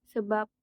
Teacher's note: Padahal hurufnya adalah B, tapi dibaca menjadi huruf P.